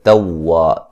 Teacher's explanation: تا کو واو سے جو ہے وہ سختی سے ملائیں گے، واو کو نرم ادا کریں گے، ٹھیک ہے.